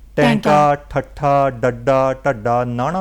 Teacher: ਸਾਡੀ ਜਿਹੜੀ ਜੀਭ ਹੈ ਉਹ ਤਾਲੂ ਦੇ ਨਾਲ ਉਲਟੀ ਤੌਰ ਤੇ ਹੋ ਕੇ ਲੱਗਦੀ ਜੀ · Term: ਉਲਟ ਜੀਬੀ